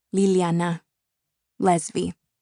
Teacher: Alveolar lateral approximant consonant.